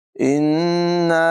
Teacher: नून मुशद्दद में हमेशा गुन्ना करके पढ़ते हैं, लिहाजा यहाँ भी गुन्ना करेंगे, नाक में आवाज़ ले जाएंगे